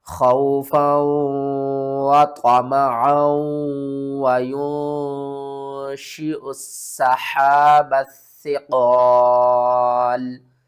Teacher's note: سین کو سختی کے ساتھ پڑھیں گے، 2 بار پڑھیں گے، اور با کو سا سے ملائیں گے، درمیان میں الف اور لام اس کو بھی چھوڑ دیں گے۔